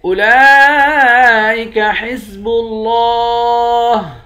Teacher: لام کے اوپر کھڑا زبر ہے، کھڑا زبر کے اوپر مد ہے، اس مد کو 5 الف کے برابر کھینچتے ہیں۔ لفظ اللہ کے لام کو موٹا بھی پڑھیں گے، ایک الف کے برابر کھینچ کر بھی پڑھیں گے، آخر میں ہاں ساکن ہے۔